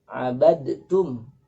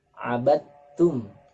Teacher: meleburkan huruf yang seharusnya dibaca dal, karena setelahnya ada huruf ta, maka dileburkan da menjadi ta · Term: idgham yang mutajanisain